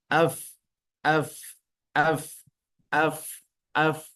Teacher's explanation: makhraj huruf fa adalah berada di gigi seri bagian atas menyentuh bibir bagian bawah, bagian dalam yang basah.